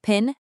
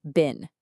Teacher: When you say pin, there's that little puff of air. With bin, there isn't. That one tiny difference between the P and B sounds completely changes the meaning of the word.